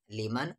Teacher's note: نون ساکن کی آواز صاف صاف کیونکہ آگے حروف اخفا نہیں ہے